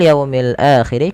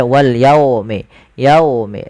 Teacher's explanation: Wal yaumil akhir, kedua-dua alif lam di sini kita baca dengan bacaan alif lam qamariyah, yaitu alif lam yang ditulis dan dibaca dengan jelas suara lamnya. Pada lafal yaumi jelaskan huruf wawunya dan didengarkan dengan bunyi u, jangan dibaca wal yaumi, yaumi dengan o, tapi wal yaumil akhir.